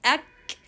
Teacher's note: the sound is cut on kaf sound because of touching the back of the tongue or the deep part of the tongue with the roof of the mouth